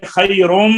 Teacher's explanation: نون تنوین کا ادغام ہو رہا ہے میم میں ادغام ناقص